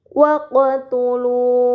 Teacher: terdapat huruf qaf sukun, ini dinamakan qalqalah, maka huruf tersebut harus dibaca secara memantul